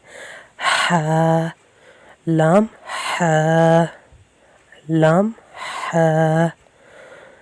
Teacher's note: خا کیونکہ خلق سے نکلے گا، لح، لام حا حا، ہا حلق سے ادا ہوگا جیسے سانس باہر کی طرف آ رہا ہوتا ہے